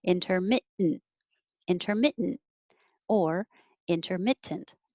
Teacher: You can say with the T perfectly, intermittent, or without the T in the middle, intermittent. So I'm holding my tongue in the T position when I say intermit, and instead of saying tent, I'm saying just make the noise.